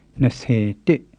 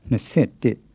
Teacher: The only irregularity, which you may have noticed, is that in compound numbers the low tone on se is often changed to a creaky tone